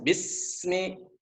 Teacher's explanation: Antara bunyi S dengan bunyi M itu nggak boleh ada jeda.